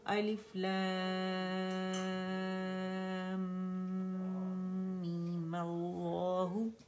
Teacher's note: ٹھیک ہے, دونوں لام جو ہے مخفم ہے تو مل اللہ ہو گئے, مل لا نہیں ہوگا, پہلا لام باریک نہیں ہوگا, دونوں لام موٹے ہوں گے · اکمل گریڈ کا غنہ ادا کرنے کے بعد ہم نے مد اصلی بنائے, یعنی میم کو 2 کاؤنٹ کھینچا, اس کو زبر فتحہ دے کے اور پھر جوڑا.